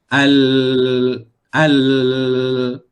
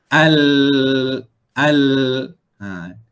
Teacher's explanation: Di bahagian tepi kiri dan kanan bahagian lidah tu, aliran suara akan keluar melalui situ. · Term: huruf Lam